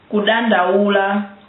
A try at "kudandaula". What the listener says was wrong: That D, the first D was too strong. Kudandaula.